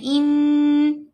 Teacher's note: آواز کو ناک میں پڑھنا غنہ کہلاتا ہے، اور غنہ کی مقدار 2 حرکات کی مقدار کے برابر ہے۔ جب ہم نے حمزہ اور نون کو ملانا ہے اس وقت آواز کو ناک میں لے کر جانا ہے، ان، یہ غنہ ہے، ان۔